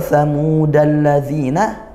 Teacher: Alla ini idgham syamsiyah, al bertemu huruf lam langsung masuk ya, karena dua huruf yang sama juga.